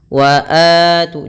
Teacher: Memperpanjang bunyi 'A' selama dua ketukan. · Maka cara membacanya yaitu kita memanjangkan huruf a-nya 2 harakat. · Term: mad thabi'i, mad badal